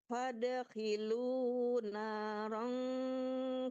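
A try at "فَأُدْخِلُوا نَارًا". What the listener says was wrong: ya bu bukan fad faud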